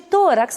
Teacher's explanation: Vejam que tórax, a sílaba tônica é penúltima, é to